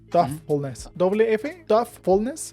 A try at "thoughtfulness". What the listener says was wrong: No, it's como F. It's almost like you don't even say it at all, but thoughtfulness. It doesn't sound like a D or an F. It really just the G and the H is almost silent. It just really impacts the way we say the O and the U. So it's thoughtfulness.